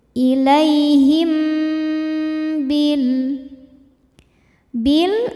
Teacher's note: Ilaihim, selanjutnya ada hukum ikhfa syafawi karena mim sukun menghadapi huruf ba. Maka mim ini berdengung dulu.